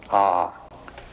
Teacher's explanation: you start in the back of the mouth ah and then ooh you fill the mouth and um closes at the mouth